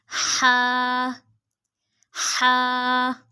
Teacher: हा हलक के दरमियान वाले हिस्से से।